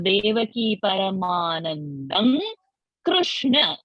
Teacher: the anuswara will become na